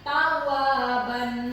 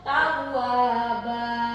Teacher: jadi membacanya tidak lagi tawaban atau ada huruf di depan a-nya itu. Jadi hilang ya, langsung tawaba. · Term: mad iwad